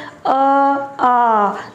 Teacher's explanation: ऊपर कहीं भी कुछ भी स्पर्श नहीं हो रहा है, कंठ से ध्वनि आ रही है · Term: कंठ्य